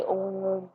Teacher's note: प्लुत स्वर जिनको बोलने में लघु स्वर से तिगुना समय लगे, उनको हम प्लुत स्वर कहते हैं, जैसे ओम।